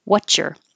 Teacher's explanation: We usually say, what's your, and that's because we're kind of dropping the S and connecting the T and the Y, and a T and a Y make a ch. So what's your, if you want to keep the your sound, or you can change your to er.